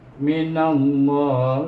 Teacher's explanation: Maka kita baca dia dengan idgham samsin, nun dimasukkan dengan huruf lam. Oleh kerana sebelum nama Allah baris di atas, kita baca lam itu dengan tebal. Tetapi kita wakaf di sini, makna kita baca 2, 4, 6 harakah.